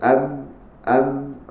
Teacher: sifat dinamakan sifat aljahar iaitu sifat yang menahan nafas jadi dalam keadaan terkeluar am am nafas tertahan itu sifat huruf